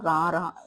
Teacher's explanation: நாவின் நுனி மேல் அன்னத்தின் முதல் பகுதியை தொட்டு வருவதால் ரகரம் தோன்றுகிறது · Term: இடையின ரகரம்